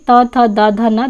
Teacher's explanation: त थ द ध न ध्वनियों का उच्चारण स्थान दंत है